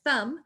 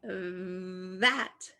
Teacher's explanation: you can say like thumb and you won't feel a vibration or you can say like that and you will feel a vibration